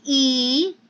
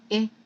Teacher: I am prolonging the sound of the E as compared to the I sound? So when I speak of the tense and the lax, I mean to say they differ in the length of the sound.